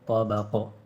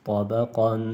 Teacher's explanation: آخر میں دو زبر ہے تو وقف میں الف پڑھا جائے گا